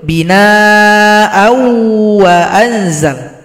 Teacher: Kalau dia dilanjutkan maka ditasydidkan pada huruf waw serta didengungkan. Namanya idgham bi gunnah.